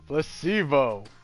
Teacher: The stress is on the middle syllable.